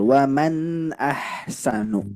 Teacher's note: Oke, hati-hati. Nun sukun tidak memantul.